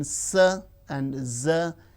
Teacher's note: alveolar, the teeth ridge and the blade of the tongue